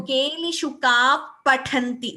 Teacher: So this is again Visarga followed by Pa, which is Upadhmaniya. · There is no Mahaprana Ka here. Upadhmaniya should be clear and Pathanti Tha Mahaprana should be clear.